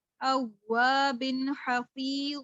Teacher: واو کے اوپر تشدید ہے تو میں نے واو پر تھوڑا ایمفیسس سے پڑھا، میں نے اس کو زور سے پڑھا. اواب حفیظ، یا ساکن سے پہلے زیر بھی تھی، وہاں پر میں نے مد بھی کر دی.